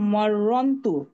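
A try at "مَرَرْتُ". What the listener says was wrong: না, র 2বার বলতে হবে ম্যাডাম।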